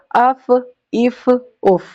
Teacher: The end of your upper teeth will touch to the inner side of your lower lip.